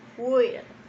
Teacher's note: requiere que la I se pronuncie un poco como E y que haya una fuerte entonación en las letras L